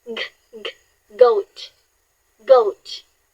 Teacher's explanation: the G sounds, on the other hand, is voiced, meaning you can feel a buzz in your throat. For example, in goat, try saying goat with me and place your hand in your throat again.